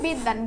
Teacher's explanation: হলে সেটা আবার দুইবার উচ্চারণ হবে। ঠিক আছে? যেমন হচ্ছে বিদ্যান বটা মাঝখানে রয়েছে এজন্য এই দ এর উচ্চারণটা দুইবার হয়েছে